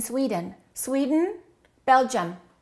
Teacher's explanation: So the I and the U sound exactly the same as the E in Sweden.